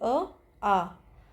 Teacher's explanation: ये किससे बोले जाते हैं? कंठ से। गले से।